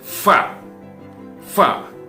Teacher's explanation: bagian tengah bibir bawah dengan ujung dua buah gigi atas ya bagian tengah bibir bawah ya dengan ujung dua buah gigi atas itu adalah tempat keluarnya huruf five ya bisa kita praktekkan ya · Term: huruf fa